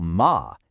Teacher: The simple syllable ma can mean ghost if you say it with a flat tone. But if you say it with a falling tone, ma, it means but.